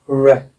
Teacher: जैसे ओ में हमारे होठ गोल हो जाते हैं, वैसे ही र बोलते समय में भी अंग्रेजी में होठ गोल हो जाते हैं